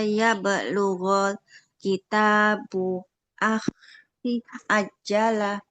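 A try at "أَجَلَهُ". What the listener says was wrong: Nggak boleh aja lah, jimnya tidak bertasydid, nggak boleh kita tekan ya.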